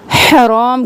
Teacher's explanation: हा बिल्कुल गले के दरमियान से, और रो मोटा